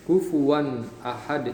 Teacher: Jadi ketika kita lihat pada baris yang pertama di sini ada contoh yang paling sebelah kanan, kufuwan ahad. Jadi kufuwan tanwinnya itu benar-benar dibaca N jelas, bunyi N-nya itu jelas. Kufuwan, dan dia tidak ada panjangnya atau gunahnya. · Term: izhar